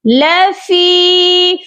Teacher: فی کو کھینچنا ہے کیونکہ فا یا مدہ کے ساتھ ہے، یا ساکن سے پہلے زیر ہو تو وہ یا مدہ کہلاتی ہے۔